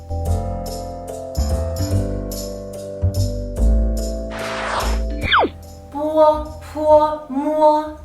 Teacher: They are bilabial consonants. What is it? It means when you pronounce it, both of your lips are closed.